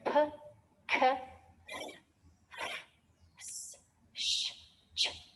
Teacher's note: these ones are called voiceless, means no vibration here, no vibration, no vibration